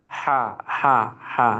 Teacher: Kalau ha itu di tengah tenggorokan.